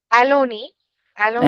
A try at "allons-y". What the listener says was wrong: no, no, no, no, no. You have to say the liaison here. Like it is very mandatory. You don't say aloni. Aloni would means something like this. Alon. What's the last sound and what's the first sound? Is that a vowel?